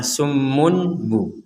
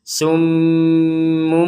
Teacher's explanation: Kalau dibaca summunbu akan menjadi jelas. Padahal ini adalah huruf ba-nya dibaca seperti mim, namun dilanjutkan menjadi huruf ba lagi. Jadi summumbu. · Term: iklab